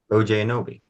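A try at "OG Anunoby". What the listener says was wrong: OJ, it's OG.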